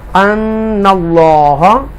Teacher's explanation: اللہ کے نام کو تفخیم کے ساتھ پڑھیں گے بولڈ